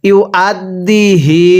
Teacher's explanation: এই হা জমিরের মধ্যে তিন আলিফ টান দিব